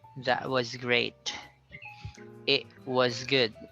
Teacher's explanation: they put a stop on the end of the vowel sound so they they don't need to pronounce the t sound